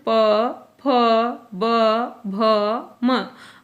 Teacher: प, फ, ब, भ, म जो प वर्ग है उसका उच्चारण स्थान ओष्ठ है, इसलिए उनको ओष्ठव्य व्यंजन कहा जाता है।